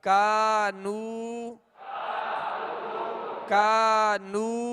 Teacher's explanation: الف سے پہلے زبر ہو، واو ساکن سے پہلے پیش ہو، یا ساکن سے پہلے زیر ہو، تو یہ حروف مدہ ہوں گے اور ایک الف کی مقدار میں ان کو دراز کریں گے. یہاں الف مدہ بھی ہے اور واو مدہ بھی ہے، دونوں کو ایک ہی مقدار میں یعنی ایک الف کی مقدار کھینچ کر ادا کریں گے